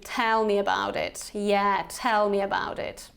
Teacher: here you can actually use this kind of falling intonation